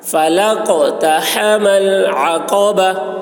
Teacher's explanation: عین حلق سے ادا کریں گے